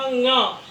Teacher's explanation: कई लोग इसको ड बोलते हैं, यह ड नहीं है, यह न है।